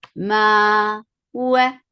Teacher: And then after that it is two counts long. Ma, wa, makhraj of waw, circling your lips.